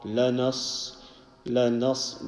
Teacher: So la is simple and na is also a very easy sound, but the na has to join to the sad.